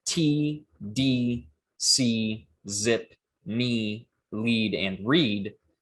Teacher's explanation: your tongue is touching or near the alveolar ridge in the production of all of these sounds